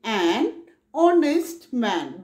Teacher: the consonant sound y similarly we say an honest man because h in honest is silent the word begins with the vowel sound o